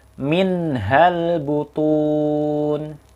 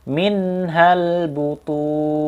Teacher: Ha keluar dari tenggorokannya ha dikeluarkan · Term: hak besar, ha besar